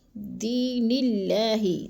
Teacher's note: دی کو بھی ہم نے تھوڑا سا لمبا کر جانا ہے، کیونکہ ادھر یا مدہ ہے